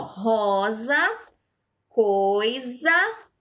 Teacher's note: Palavras escritas com S entre vogais, porém o som é com Z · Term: som de Z